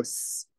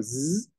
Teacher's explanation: your voice box like you put your hand to it and you go s it doesn't vibrate if you go z it does vibrate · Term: voicing